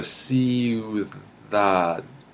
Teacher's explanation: your tongue is actually going in between your teeth. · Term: theta